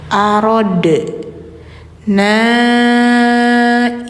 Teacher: Nah, ini si dal masuk ke hukum qalqalah maka bacanya pantul.